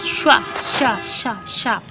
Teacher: ये आपकी तालव्य है, क्योंकि जहाँ शा शब्द का आप उच्चारण कर रहे हैं तो जो आपकी जीभ है वो तालु को छूती है